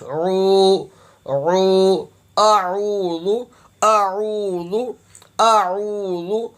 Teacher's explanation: عین کی ادائیگی حلق سے ہوگی